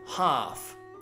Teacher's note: no L sound at all